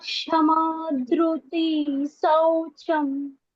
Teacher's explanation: विसर्ग का उच्चारण दंत श होगा